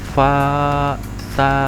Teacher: harokat fathah yang berdiri itu dibacanya panjang, satu alif atau dua harokat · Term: mat tabi'i